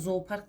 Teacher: Onun biri düşür, digərisi uzun o kimi tələffüz olunacaq.